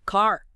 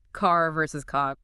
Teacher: That clear strong R often made with the tongue bunching or curling back. That's reticity. Now contrast that with say standard British English where the R in car might be softened or dropped altogether.